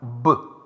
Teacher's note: The bahya prayatna is nada, resonance, ghosha, voice and samvara, closure. B is alpa prana. It requires less breath and it is called non-aspirate sound